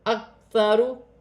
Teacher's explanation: اکثارو، کاف باریک ہے، ساکن ہے، اپنے سے پہلے حرف کی حرکت کے ساتھ ملا کر پڑھا جائے گا. ثا نرمی والا حرف ہے، را پر پیش کی حرکت ہے، را موٹی پڑھی جائے گی